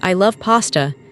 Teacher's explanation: Notice the emphasis on love. This shows genuine enthusiasm.